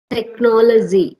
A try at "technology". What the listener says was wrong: You are using Z. Okay, you're using Z. It should be G. Technology. It's not technology. Technology. GY, right? So technology, not technology.